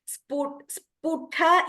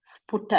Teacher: This ta should be Alpa Prana only.